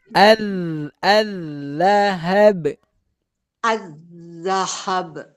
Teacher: jangan dipanjangin H-nya langsung putus